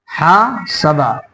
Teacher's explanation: تو ہا کو کھینچنا ہے اور سین کو جلدی پڑھنا ہے، با کو جلدی پڑھنا ہے